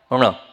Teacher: अणा में जीभ कहाँ जाएगी, पीछे मुंह होके जाएगी।